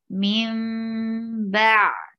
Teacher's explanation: Mim, there is iqlab. When you find ba after noon sakina, you will change the sound of noon into mim